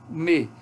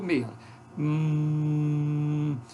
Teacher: Olha a articulação do me. Então, embora eu tenha totalmente fechada a minha boca, a oclusão total na boca, eu tenho ressonância pela cavidade nasal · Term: oclusiva bilabial